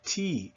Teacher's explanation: You hear that T is the tip of my tongue and it's very explosive and very hard.